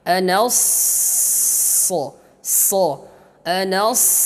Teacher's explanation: Kalau sin tarakik tipis, tapi kalau sad tafkhim, tebal. Dan sifat yang harus juga diperhatikan pada huruf sad ini adalah sifat as-safirnya, desiran anginnya, desiran nafasnya yang kencang. Anas, anas, kemudian masuk huruf ra di sini tebal, tafkhim, karena harakatnya dhammah.